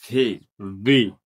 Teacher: আমরা যেখান থেকে এফ উচ্চারণ করছিলাম, ঠিক সেম জায়গা থেকে ভি উচ্চারিত হইব। নিচের টুট, উপরের দাঁত। তাহলে এটা উচ্চারণ হবে ভি।